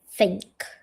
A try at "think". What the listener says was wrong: Yeah, this is a very difficult sound. It's you sound like someone from London called a Cockney who can't say this sound. You must get your tongue and put your tongue down like like this.